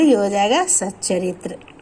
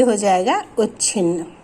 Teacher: ता का मेल चा से या छा से होने पर ता हमारा चा में परिवर्तित हो जाता है।